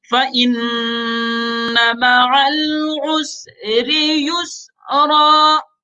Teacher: وَرَفَعْنَا لَكَ ذِكْرَكَ، اس کے بعد فَإِنَّ نون کے اوپر تشدید ہے، نون کے اوپر شد ہے تو نون میں غنہ ہوگا. فَإِنَّ مَعَ الْعُسْرِ يُسْرًا.